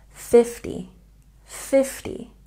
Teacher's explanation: we have a stress on the first syllable for numbers in the tens and this T makes a soft T sound 50 50 but